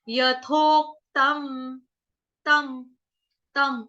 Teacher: अब इसको तामा, तामा नहीं पढ़ेंगे, तामा बोलेंगे तो क्या हो जाएगा, तामा में म हमारा पूरा आ जाएगा, तो हमको म को पूरा नहीं गाना है, हमको म को हलंत रखना है